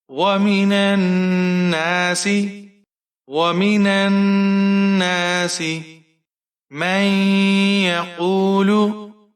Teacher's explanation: یہاں پر غنہ ہوگا، نون کو نون کے ساتھ ہم نے ملانا ہے شد کی وجہ سے